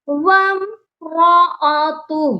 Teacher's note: وامرأتہ، اس لفظ کو بہت سے لوگ غلط پڑھتے ہیں، وامرأتہ، تو یہ جو ہے ہو، جب ہم اس پر وقف کرتے ہیں تو ہو کو جو ہے سائلنٹ کرنا ہے، ہا کو ساکن کرنا ہے، ہو کی آواز پر آ کر رک جانا ہے.